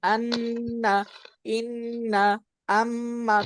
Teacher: আমাদের সমস্ত গুন্নাহ কোত্থেকে উচ্চারিত হয়? আন্না, ইন্না, আম্মা, কোত্থেকে হচ্ছে? নাকের বাসি থেকে।